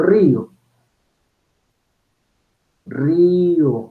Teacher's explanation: donde se pronuncian dos vocales en dos silabas distintas